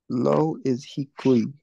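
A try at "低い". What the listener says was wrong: Yep, hikui. Perfect.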